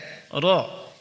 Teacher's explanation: roh keluar dari ujung lidah menempel pada gusi dua gigi seri atas sedikit lebih masuk ke punggung Ida dari makhluk Nun perhatikan roh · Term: huruf-huruf roh